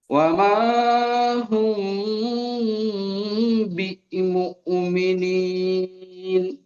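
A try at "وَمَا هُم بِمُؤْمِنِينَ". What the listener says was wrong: ওমা হুম বি মুমিনিন, এই বি এখানে একটু ঝাটকা মতো হয়ে গেছে, ঝাটকাটাও হবে না। ওমা হুম বিমুমিনিন, পড়েন।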